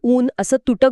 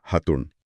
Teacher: इथे अ आणि ऊ समोरासमोर आले, पण अचा उच्चार पूर्णपणे गिळला गेला आणि फक्त ऊ उरला.